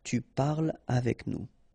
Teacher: so no liaison here between parle and avec